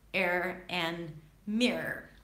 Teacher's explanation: when there are schwa R's at the end of a word, then it can sound, it will sound just like one long R, as in air and mirror.